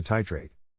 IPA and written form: ˈtaɪ treɪt (TITRATE)